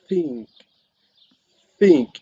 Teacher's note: your vocal cord doesn't vibrate · Interdental means the tongue is placed between the upper of the lower teeth, and it is fricative because the air flow is pushing through narrow space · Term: th sound